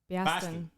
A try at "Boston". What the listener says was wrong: Biaston? With like BYAS? Pronounce it BAW. Boston. It's not Boston. It's Boston. But actual like city dwelling Bostonians is it's Boston. BAW.